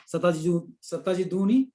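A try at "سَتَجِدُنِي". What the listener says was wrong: Yeah, but don't make the dhamma long.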